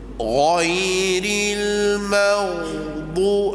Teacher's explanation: Suruh dia bulatkan bibir mulut, ghairil maghdu. Maka pada ketika itu akan dengar ketebalan ghain yang sebenar. Bila dia dah biasa dengan bunyi tebal yang macam tu, lama-lama dia tak bulat bibir mulut pun, bunyinya dia tahu mana satu yang fasih.